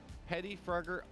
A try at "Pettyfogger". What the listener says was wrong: Pettyfogger. No, adds the R. Everyone adds the R.